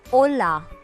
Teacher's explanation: Note here that the H is silent. So the pronunciation is hola, as in Ola cabs.